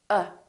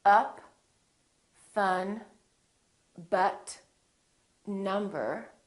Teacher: my lips are neutral uh they're not doing it very much and my tongue is also neutral in the back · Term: neutral sound